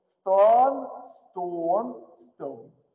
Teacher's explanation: Оно проходит через стадию О закрытого, но потом уезжает направо. В дифтонг О.